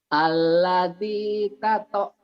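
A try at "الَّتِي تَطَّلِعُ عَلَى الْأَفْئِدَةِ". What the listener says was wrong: Bukan, jangan dikol-kolahkan. Tato, jangan ditato. Tali'u, jangan dimatikan. Tali'u, double doang. Allati tali'u t dulu tuh latinnya ya, baru ke to tali'u. Kalau Bapak to jangan dimatikan, jangan dikol-kolahkan karena itu hurufnya tidak mati, hidup.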